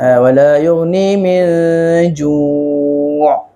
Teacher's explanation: nun mati itu jumpa dengan huruf apa? Huruf jim. Maka hukum dia adalah ikhfa hakiki. So dibaca dengan dengung lah ya.